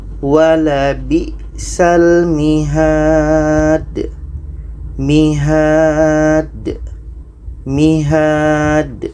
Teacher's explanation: Jadi di sini ada da yang mati, letaknya pada akhir ayat, maka ini qalqalah kubra.